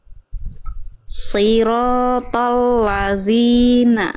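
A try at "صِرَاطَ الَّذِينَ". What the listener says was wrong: Ya, tapi tolnya jangan jadi tipis, jadi to. Tolnya tetap pangkal lidahnya naik. To. To. Jadi to-nya tebal, lamnya tipis. Jadi tadi lamnya Bunda terbawa tebal oleh huruf to-nya.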